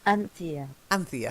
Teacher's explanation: stress is at the first syllable